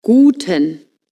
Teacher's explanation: the U is pronounced oo a bit like in boot but shorter